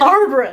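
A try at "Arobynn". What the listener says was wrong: And there's only 1 R. You're saying Arbrin. I think I say Arabin. Or Arabin.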